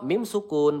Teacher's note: mim sukun bertemu ro ya. Izhar syafawi. Kita cukup baca dengan jelas saja tidak perlu kita tahan di sini ya.